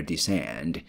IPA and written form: dɪˋsɛnd (descend)